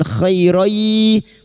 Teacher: khay fathah bertemu ya sukun dilunakkan huruf lin, khairai. Fathah tanwin atau fathatain yang bertemu ya idgham bi gunnah masuk pada huruf ya dan mendengung selama 3 harokat.